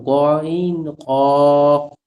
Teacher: তিন নাম্বার মাখরাজ হালকের শেষ হইতে গাইন খ